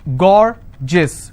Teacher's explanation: So gorgeous, 2 syllable, I will stress on gore